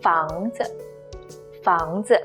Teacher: In this case, 子 is neutral tone, no tone mark, no stress, just brief and light.